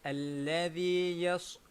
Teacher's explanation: Seolah-olahnya kita macam bersiul sedikit dan siul itu mestilah tajam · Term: as-safir